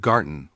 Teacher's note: it's a hard gay sound, never a soft J sound like in giraffe